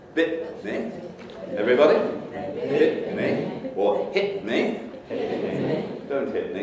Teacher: the syllable final stops often have a reinforcing glottalization